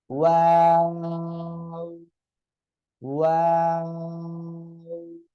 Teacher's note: এ অক্ষরটাও দুই ঠোঁট থেকে উচ্চারণ হবে, আর এ অক্ষরটা দুই ঠোঁট গোল হবে, প্রথমেও গোল শেষেও গোল হবে, মাঝখানে শুধু দুই দিকে দুই ঠোঁট চলে যাবে।